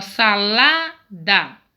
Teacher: lá é a sílaba mais forte ela é paroxítona